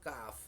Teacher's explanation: Bertempat pada pangkal lidah setelah makhrajnya qaf, keluar sedikit dan di bawahnya disitulah makhrajnya huruf kaf.